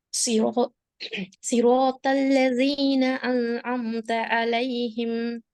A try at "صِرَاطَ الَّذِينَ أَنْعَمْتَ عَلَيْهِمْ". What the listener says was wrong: அந்த ஆவப்பில صراط الذين أنعمت عليهم. أنعمت முன்னால வரக்கூடிய நூனோட அலிஃபை சேர்க்கக்கூடாது. அது பிழை. அப்படி சேர்க்கிறது பிழை.